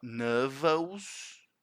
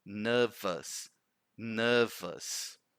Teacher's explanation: the schwa sound is not os at the end. It's us.